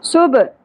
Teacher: با ساکن پہ قلقلہ ہوگا سین میں سیٹی کی آواز ہوگی